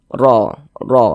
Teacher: dibaca tebal sehingga pangkal lisan kita naik terangkat ke atas ketika Kita mengucapkannya